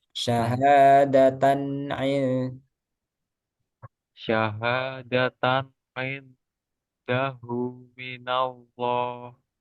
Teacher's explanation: Jadi ini izhar kan jelas nunnya